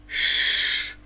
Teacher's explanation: Язичок піднімається вверх до верхніх зубів і стає схожим на чашечку. Губки трохи витягуються вперед. округлюються і стають схожими на бублик. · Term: шиплячим